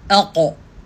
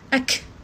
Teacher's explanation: Suara kita tu naik, dia melantun kena bahagian kubah langit. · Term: huruf musta'liyah